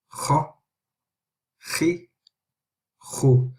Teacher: That with the fatha is the heaviest, kha, and with the kasra is khi, it's lighter than the kha, but it's still heavy, khi, and khu, which is also heavy as well. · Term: heavy letters